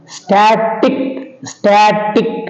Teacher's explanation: they take stress on the penultimate syllable that means on the second syllable from the end